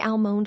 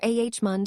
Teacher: almond with a clear L or ah mund swallowing the letter completely